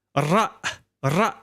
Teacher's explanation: the tip of the tongue is not exactly toward pointing to that big hole in the roof of your mouth, but it's actually sitting just behind the alveolar ridge, just behind the upper front teeth. Ra, ra. And that's why it sounds a bit stronger than the English version of that.